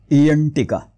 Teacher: फक्त ओठांची हालचाल होते जिभेची हालचाल होत नाही एम टीका पण न हे तालव्य आहे म्हणजे न चा उच्चार करताना जीभ उलटी फिरते 90 अंशामध्ये आणि टाळूला लागते